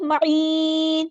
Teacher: نون کو ساکن کر دیں گے اور مد عارض بھی ہوگی، ٹھیک ہے. لیکن اگر ہم وقف نہ کریں، اگلی سورہ سے ملا دیں تو معینن پڑھیں گے.